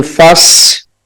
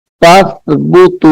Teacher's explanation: یہاں پہ سیٹی کی آواز نہیں نکالنی، یعنی فس ایسے نہیں پڑھنا، بلکہ فت زبان کا جو کنارہ ہے، زبان کی جو نوک ہے، اس کو دونوں دانتوں کے درمیان میں رکھ کر اس حرف کو ہم ادا کریں گے. تا تو سیٹی کی آواز نہیں آئے گی.